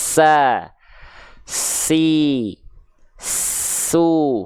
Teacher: jadi ketika kita melafalkan sin, pastikan desisnya mengalir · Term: sofir